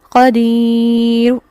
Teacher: وقف بالروم کی صورت میں پیش تنوین کی ایک حرکت ہلکی سی پڑھی جائے گی، قدیر، ہلکا سا اس کو ادا کیا جائے گا.